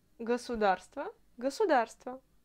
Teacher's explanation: Je sais que tu peux t'étonner parce que moi je prononce le singulier comme le pluriel et même si le mot государство se termine par le O, je le prononce toujours comme le A. Ne t'étonne pas, je vais te dire un petit secret, c'est l'accent de Moscou.